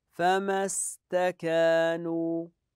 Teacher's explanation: هذه همزه وصل لا تنطق في حال الوصل